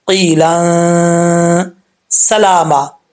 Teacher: سین حروف صفیریہ میں سے ہے تو اس کو بریک پڑھیں گے سیٹی کے ساتھ. لام کے اوپر کھڑا زبر ہے، ایک الف کی مقدار لمبا کیا جائے گا. · یا ساکن سے پہلے زیر ہے یا مدہ پڑھا جائے گا، ایک الف کی مقدار لمبا کریں گے. اور لام کے اوپر 2 زبر ہیں، یہاں پہ سین ہے تو یہاں پہ تنوین کا اخفاء ہوگا، ایک الف کی مقدار غنہ کریں گے